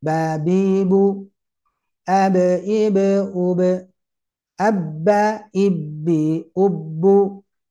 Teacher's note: ternyata ba itu benar-benar keluar dari bibir. Oh iya, tidak dibuat atau dibentuk apapun di sana kecuali hanya menekan saja. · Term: huruf ba